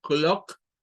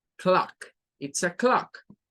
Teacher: Bueno, en el caso de clock es bastante fácil, es una palabra que termina con K y comienza con K, y luego el sonido de esa O es el sonido de la AO, clock, no es como decir clock, porque ahí está diciendo una O pura, es una mezcla entre una A y una O, como querer sacar la A con el sonido de la O, con la forma de la O